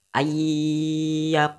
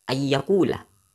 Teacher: Lam harokat dhammah malah dibaca fathah